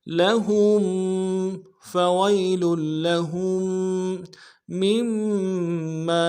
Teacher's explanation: ہا کو میم ساکن کے ساتھ ملا کے اگلا جو میم ما ہے اس کے اوپر تشدید ہے، اس کے ساتھ ملائیں گے، تشدید میں زور دیں گے